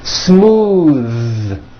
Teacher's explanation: Most foreign speakers say this word incorrectly. They say smooth with an unvoiced TH, but it's voiced.